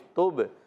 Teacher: تا کو با سے ملانا ہے، با عرف قلقلہ میں سے آواز لوڈ کر آئے گی